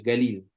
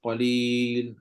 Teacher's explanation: biasanya yang tukar huruf qf jadi J ni adalah orang-orang belah orang-orang belah Hijaz orang belah Arab Saudi dalam percakapan mereka Q tu jadi ga · Dalam percakapan mereka qaf tu jadi ga. Galil, dia baca galil.